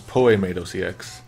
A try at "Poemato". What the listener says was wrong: Poemato. Emphasis on the t.